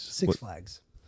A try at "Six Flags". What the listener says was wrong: You're saying it like 2 separate words. I'm saying 6 Flags. No, it's not because there's not space between them.